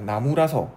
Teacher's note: 동음이 이어져서 아가 탈락되는 동음 탈락이니까 리을의 사례에 해당되고요.